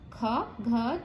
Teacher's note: जिन वर्णों के उच्चारण में हमारे मुंह से निकली वायु बहुत ज्यादा निकलती है उन्हें महाप्राण कहते हैं। प्रत्येक वर्ण का दूसरा और चौथा, उसमें कौन सा था?